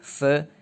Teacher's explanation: It's gonna be voiceless dental fricative th